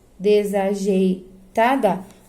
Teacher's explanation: O E e o I ficaram juntos na pronúncia, então isso é um ditongo, eu não vou separar.